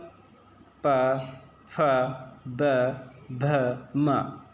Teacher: प फ ब भ म ये ओष्ठ से बोले जाते हैं। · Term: प वर्ग